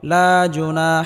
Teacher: জবরের বাম পাশে খালি আলিফ মাদের হরফ এক আলিফ পরিমাণ লম্বা করে টেনে পড়তে হবে